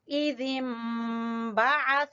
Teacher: दोनों होंठों को मिला के गुन्ना करेंगे। इज़िन्बअस, बा को छोटा पढ़ेंगे और आइन को वस्त हलक से अदा करेंगे। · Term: इक़लाब